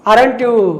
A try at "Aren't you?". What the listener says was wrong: ఆంట్ you అనండి. ఆర్ఎంట్ యు కాకుండా ఆంట్ you studying in Hyderabad? ఆంట్ you.